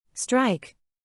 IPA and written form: straɪk (Strike)